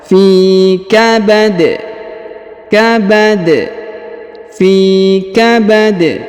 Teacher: Huruf dal berharokat tanwin karena dia berada di ujung ayat atau di ujung bacaan kita, maka kita sukunkan dia, dan karena dia sukun maka kita pantulkan atau kita qalqalahkan